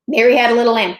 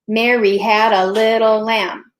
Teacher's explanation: You've just broken the rule in a way that's acceptable because you dropped the very first unstressed syllable in the very first iamb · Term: iambic